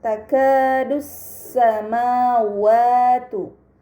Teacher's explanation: alif lam syamsiah karena Hamzah wasal pada alif lam dibaca fathah lam pada Lam Syamsiah tidak dibaca namun langsung dibaca huruf setelahnya